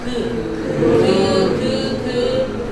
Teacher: 혀 뒤에가 움직여서 왔다 갔다 거리면서 그 그 그 그 하는 거예요